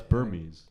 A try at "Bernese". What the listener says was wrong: then it's Bernese with an N. The dog has an N. So the dog has an N, not an M, to be clear.